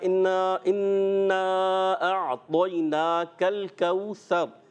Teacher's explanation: کل یہاں مجھے سننے میں کاف موٹا محسوس ہوا، تو آپ نے کاف کو باریک رکھنا ہے